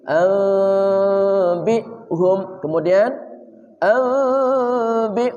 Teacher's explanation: Anbi'hum beserta gunnah, kedua mulut dibuka sedikit.